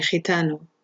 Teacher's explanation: if it's followed by E or I, this is pronounced with a low guttural sound